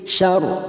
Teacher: Wa hasyar ra sukun kita baca tafkhim